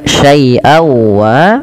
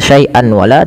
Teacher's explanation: masukkan suara tanwinnya pada lafal syai'an kepada huruf waw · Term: idgham